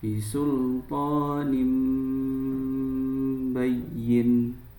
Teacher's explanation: Maka itu menandakan bahwa ayat tersebut bacaannya adalah, hukumnya adalah iklab. Jadi harus mengganti fathah tanwin, mengganti tanwin atau nun sukunnya menjadi mim.